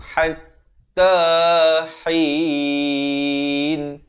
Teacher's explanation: Ha pedas. Di pertengahan kerongkong. Hatta hin. Dan di akhir baru masuk ke dalam nun.